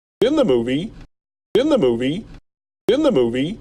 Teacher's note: a little bit more stress movie and pitch goes up because he's not done talking